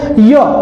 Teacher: य में भी ना तो जीभ पूरी तरह से टच होती है ना ही ओठ पूरी तरह से टच होते हैं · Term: अर्ध स्वर